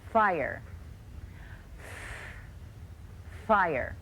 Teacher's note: watch my mouth as I make the beginning sound in fire my teeth are touching my lower lip I'm blowing air through my teeth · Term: sound of F